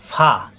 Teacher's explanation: উপরের দাঁতের আগা নিচের ঠোঁটে পেটে লাগবে